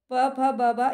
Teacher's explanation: प, फ, ब, भ, इनको आप बोल के देख लेना, ये ओष्ठ को स्पर्श करते हैं ना, ओष्ठ से बोले जाते हैं